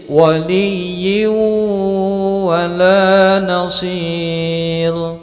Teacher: waliyin wala nasir menjadi waliyyu wala nasir, ya. Ini tanwin kasroh bertemu dengan wawu ditasdidkan mendengung panjangnya 2 harokat. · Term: idgham bi gunnah